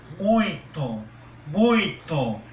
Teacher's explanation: muita atenção também quando for para anunciar o muito o muito é bem anasalado · perceba que o som preciso sair pelo nariz por isso que quando eu fecho nariz a palavra o fonema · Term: nasalidade